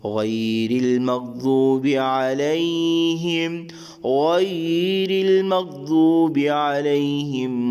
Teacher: را کے نیچے زیر کی صورت میں را کو باریک ادا کریں گے. آگے ضاد بھی حروف مستعلیہ کے اندر شامل ہے, ضاد کو بھی موٹا یعنی پر ادا کریں گے.